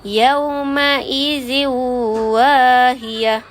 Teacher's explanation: Huruf idgham ma'al gunnah. Kita gabungkan tanwin dalam waw dan baca dengan 2 harkat.